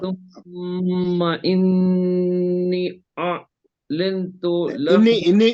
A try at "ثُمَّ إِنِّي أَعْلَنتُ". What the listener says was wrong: انی میں مد ہے یہاں پہ مد ہے مد ثم انی اعلم ہے نا نہیں آپ ایک منٹ وہاں پہ دو چیزیں ہیں ایک تو غنہ ہے پھر غننے کے بعد مد ہے ثم انی اعلم ایسا